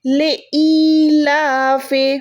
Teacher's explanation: لام کھڑی زبر ہے، اس کو ایک سیکنڈ، کھڑی زبر کو ایک سیکنڈ کھینچنا ہوتا ہے، جیسے لام الف زبر لا ہوتا ہے نا، الف مدہ ہوتا ہے، لام الف زبر لا، اور یہاں پر ہے لام کھڑی زبر لا، تو دونوں کی بات ایک ہی ہے، ٹھیک ہے، صرف نشانیاں فرق ہیں، باقی جتنا ہم لا کو کھینچتے ہیں اتنا ہی ہم اس لا کو کھینچیں گے۔